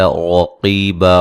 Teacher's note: قاف کو موٹا ادا کریں گے، را کو بھی موٹا ادا کریں گے